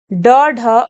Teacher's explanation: जिनके उच्चारण में जिह्वा की नोक झटके से नीचे गिरती है, वह उच्छिप्त फेंका हुआ ध्वनि कहलाती है।